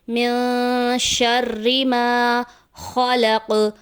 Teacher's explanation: زبر الف مدہ جس کو ایک الف کے برابر کھینچ کر پڑھتے ہیں